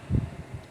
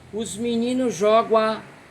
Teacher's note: O Gá de gan junta-se com o A de a bola. Os meninos jogam a bola.